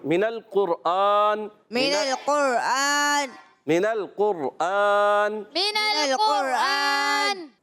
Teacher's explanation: میم کے نیچے زیر ہے، حرکت نہیں کھینچیں گے، نون کو لام سے ملانا ہے